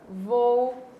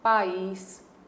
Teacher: duas vogais, dois fonemas vocálicos que são fortes, um ao lado do outro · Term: hiato